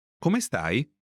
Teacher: Note the rising intonation to mark that it's a question.